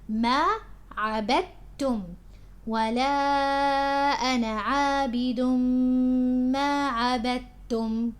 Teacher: The dal here merges with the ta, with the sound of the ta, the letter ta, so it's as if the dal isn't here. So you say عبدتم, not عبدتم.